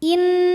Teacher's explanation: Ada hukum gunnah musyaddadah atau gunnah aja ya, atau wajibul gunnah atau nun musyaddadah ya. Karena nunnya bertasydid, maka cara bacanya didengungkan. Jadi bunyi N tahan sampai ada suara masuk hidung kurang lebih 2 harokat.